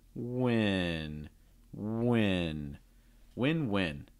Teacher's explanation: Usually that second win has a falling intonation. It's like win, win, going down.